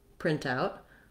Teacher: if you're talking about a noun, like a printout, something that we printed out, then you're going to stress the first syllable and it'll sound like print out.